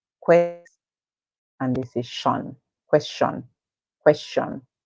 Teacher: question all right some people say question question that is where they are pronouncing the ti as sh